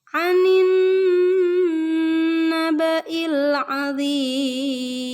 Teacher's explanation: Nun yang bertasydid juga jadi ditahan dulu